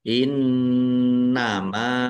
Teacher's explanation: nun tasdid bacaan ghunah atau mendengung. Dibaca mendengung ditahan biar tampak mendengungnya. Innama mim fathah alif mad thobii.